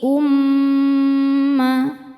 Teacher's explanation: Cara bacanya berdengung, dengungannya tahan kurang lebih 2 harokat. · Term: gunnah musyaddadah